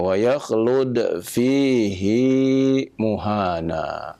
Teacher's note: Pada kalimat fihi, hi dibaca dengan dua harokat.